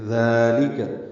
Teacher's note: لام کو باریک پڑھیں گے، 2 حرکات لمبا کریں گے، ذالک ذال کو لمبا کریں گے باریک پڑھتے ہوئے، نرمی سے پڑھتے ہوئے ، کھڑا زبر ہے 2 حرکات لمبا کریں گے، لام کاف